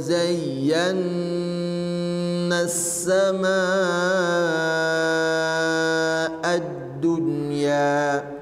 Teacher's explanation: nah itu alif lamnya tidak dibaca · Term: alif lam syamsiyah